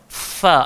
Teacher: Kena ada udara keluar sebab tata cara sebut huruf fa ni memang kena ada angin keluar di antara gigi tu.